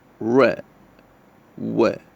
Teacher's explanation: sound and the last is glide the manner of articulation where there is a glide or a quick movement towards the following vowel